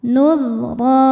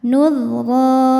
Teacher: Saat berhenti di ro, maka ini hukumnya adalah mad iwad karena ada baris fathah tanwin yang diberhentikan. Cara bacanya baris duanya jadi satu jadi ro dan panjang dua harokat. Nul ro. Innama in.